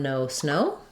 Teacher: a a lot of languages have just o with no closing in English we typically close o and glide as we say that sound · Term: gliding vowel